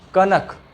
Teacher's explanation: इसमें नाक से थोड़ा उच्चारण निकालते हैं, हल्का नाक से भी आवाज निकलता है। कनक, ये हो गया कनक, इसको पढ़ेंगे कणक, कणक।